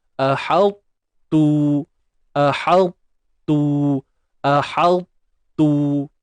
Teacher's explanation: Kemudian baru tebalkan ta, kemudian hanya kita abaikan sifat lantunan sahaja. Kemudian terus sebut huruf ta yang berbaris depan dengan memuncungkan bibir lah. Bila huruf yang berbaris depan ni kena muncung bibir.